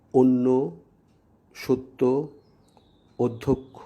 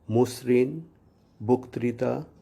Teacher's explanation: আদ্য অধ্বনি উচ্চারণের পরবর্তী নিয়ম হল আদ্য অ বা শব্দের শুরুতে অ এর পর জফলা বা ঋকারযুক্ত বর্ণ থাকলে উক্ত অয়ের উচ্চারণ সাধারণত সংবৃত বা ওয়ের মতো হয়